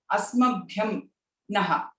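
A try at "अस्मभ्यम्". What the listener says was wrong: Dirgham nasti. Asmabhyam.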